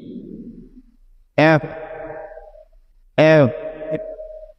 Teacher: উপরের দাঁত দিয়ে নিচে ঠোঁটে আলতো করে কামড় দিতে হচ্ছে, তাই তো? এবং এটার মাঝখান দিয়ে কিন্তু একটু বাতাস বের হয়ে যাচ্ছে।